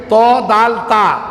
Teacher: জিব্বার আগার সামনের উপরে 2 দাঁতের গোড়ার সঙ্গে লাগে ত, দাল, তা